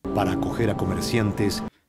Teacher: La A final de para se fusionó con la A de acoger y la R de acoger se fusionó con A.